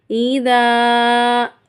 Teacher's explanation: ذال کے ساتھ میں الف ہے، الف سے پہلے حرف پر زبر ہے، تو اس کو ہم ایک الف کی مقدار کھینچ کر پڑھیں گے